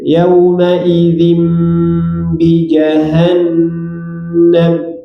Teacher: iklab tanwin menghadapi ba, dirapatkan dua bibirnya.